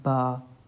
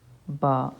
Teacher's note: دونوں ہونٹوں کے اندرونی تری والے حصوں کو ملانے سے با، یعنی ہونٹوں کو ملانے سے ہم با پڑھتے ہیں. با.